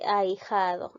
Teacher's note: primero está la abierta y luego están las cerradas de esta manera ya es decir primero abres la boca y luego va cerrando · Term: diptongo